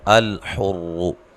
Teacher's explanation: حمزہ کو تحقیق سے پڑھنا ہے، لام کو ساکن ادا کرنا ہے لیکن ہلانا نہیں ہے، موٹا نہیں پڑھنا۔